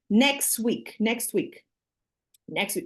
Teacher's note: there is no T next week so that sound of the T sound it disappears · So that sound of the t sound, it disappears. So if you add this sound, it doesn't sound like normal speech. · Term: elision